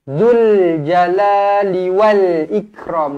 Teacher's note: Alif lam qamariyah, huruf lam mati tu kita matikan terus